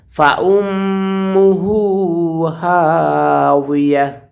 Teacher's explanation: গুণ হবে মিমের উপরে তাসদীদ আসার কারণে